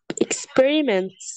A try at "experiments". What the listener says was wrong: experiment. No, yeah, you have to pronounce the S, plural, أكيد. Experiments.